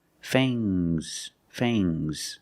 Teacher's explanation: the S is making a zebra sound but it's soft · Use a long A plus the nasal sound and a soft G.